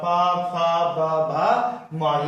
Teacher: औष्ठ से आपका प फ ब भ म, ये पांचों आपका औष्ठ से होते हैं। बिना औष्ठ की सहायता से आप प वर्ग का उच्चारण नहीं कर पाइएगा।